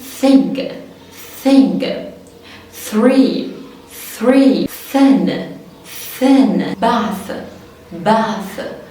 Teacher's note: حط ايديك على الفوكال كوردز بتاعتك، احبالك الصوتيه ما اتحركتش او ما حسيتش فيها فايبريتنج كده رعشه، خلاص يبقى ده ايه unvoiced، مفيش اصلا صوت اهو، ده مجرد شويه ايه هوا خلاص.